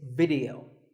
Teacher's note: both the I and the E are pronounced as short I sounds